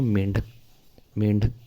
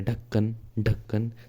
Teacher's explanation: जीभ क्या है, ऊपर एकदम झटके से ऊपर की ओर उठती है। तो इन्हीं को कहते हैं द्विगुण व्यंजन या उक्षिप्त व्यंजन।